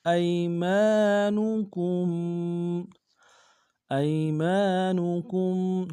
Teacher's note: حمزہ کو یا کے سامنے لائیں گے، یا لین بغیر کھینچے بڑھیں گے، میم کے ساتھ الف مد ایک انتظار میں کھینچیں گے، کاف کو میم ساکن کے سامنے غنہ کریں گے۔